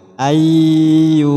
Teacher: membaca dua huruf menjadi satu huruf seperti Huruf yang kedua dengan tasdid pada huruf yang kedua disertai gunah berarti praktiknya Idam bunah ayyusola sama seperti tadi memasukkan · kedua disertai gunah berarti praktiknya Idam bunah ayyusola sama seperti tadi memasukkan suara nun mati pada ya